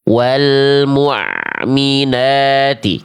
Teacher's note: Karena yang A yang kita baca tadi itu huruf ain, suaranya mengalir sedikit dari tengah tenggorokan.